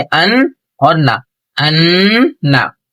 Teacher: ایک الف 1 سیکنڈ کے برابر ہم کو نون کی اور میم کی آواز کو ہم کو روکنا ہے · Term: غنہ